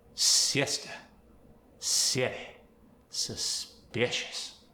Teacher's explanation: the I as in it gets an E sound.